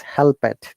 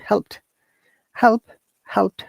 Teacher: It is not double syllable word. It is single syllable, and this ed sounds like t.